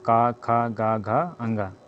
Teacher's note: जो क वर्ग होता है वो कंठ होता है